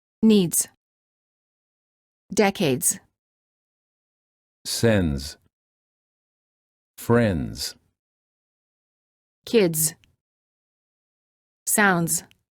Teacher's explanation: Make sure that you pronounce both the D and the Z sound in the following words. The S is pronounced like a Z sound because it's followed by a D, which is a voiced consonant. · The S is pronounced like a Z sound because it's followed by a D, which is a voiced consonant. The D will need to be pronounced softly in order to ensure a smooth transition to the Z. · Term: Words with DS